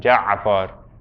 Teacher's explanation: whenever there's an ayn, yeah, you do the ayn sound. It's not really a pause. What's happening is that the strangling sound is happening there. So it takes some time for that to happen.